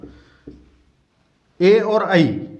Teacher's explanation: ए और आई, इनका उच्चारण स्थान होता है कंठ और तालु दोनों से मिलकर के।